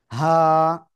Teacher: গলার শুরু থেকে বা হলকের শুরু থেকে হা এক আলিফ টানে উচ্চারণ করব একেবারে স্বাভাবিক হা কোন গলাও চাপা লাগবে না কিচ্ছু করা লাগবে না ঠিক আছে হা সবাই একসাথে জোরে জোরে